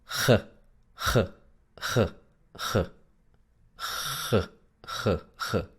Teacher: es muy parecida a la J del español, por ejemplo, en la palabra jarra. Pero es un poco más central, no es tan atrás